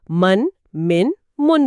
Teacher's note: صفحے پر مثال ہے میم 2 زبر من، میم 2 زیر من، میم 2 پیش من۔ یہاں آپ صاف طور پر سن سکتی ہیں کہ ہر ہجے کے آخر میں نون ساکن کی آواز شامل کی جا رہی ہے۔